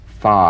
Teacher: this is voiced fricative labiodental upper teeth to lower lip feel the teeth planted right in the lower lip you set